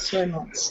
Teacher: a trick with the word months okay is not to pronounce the th